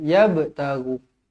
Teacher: Qalqalah kan, jadi qalqalah kena lantun.